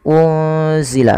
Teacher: menyamarkan nunnya kepada huruf zai yaitu bacaan ikhfa hakiki. Kemudian alaina lembutkan pada lafal ya yang didahului dengan fathah karena ia bacaan lin. · Unzila sama menyamarkan nunnya kepada huruf zai, yaitu bacaan ikhfa hakiki.